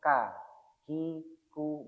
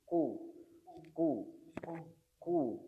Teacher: maka pangkal lidah atau lidah belakang kita kemudian terangkat menjadi ku ku ku ku. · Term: huruf qof